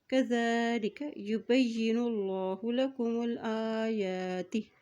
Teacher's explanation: اللہ کے نام سے پہلے پیش ہے تو اللہ کا نام یہاں موٹا عطا کیا جائے گا